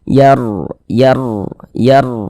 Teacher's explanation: huruf ro sukun sebelumnya harakat fathah maka huruf r sukunnya dibaca tafkim Dibaca te tebal sehingga pengkalisan kita naik terangkat ke atas ketika